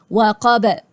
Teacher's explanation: الباء هتعمل لها قلقلة لو أنت وقفت